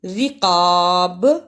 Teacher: را کو باریک پڑھنا، قاف کو صحیح جگہ سے ادا کرنا اور با پہ قلقلہ بھی کرنا